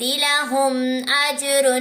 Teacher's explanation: میم کے بعد اور با اور میم نہیں ہے، حمزہ ہے تو یہاں پر غنہ نہیں کریں گے. اظہار شفی ہو رہا ہے. جیم کے اوپر قلقلہ کریں گے.